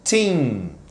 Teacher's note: Como se fosse dar um sorrisinho mais simpático. Ou seja, os lábios, eles não se encostam até o fim da palavra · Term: som do N